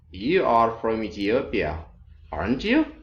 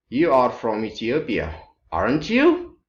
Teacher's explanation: so we have rising intonation which means you are not very sure